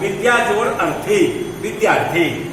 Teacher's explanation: यहाँ पर एक दीर्घ है और एक ह्रस्व है, ये दोनों भी मिलकर के दीर्घ होगा, आ होगा। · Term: दीर्घ संधि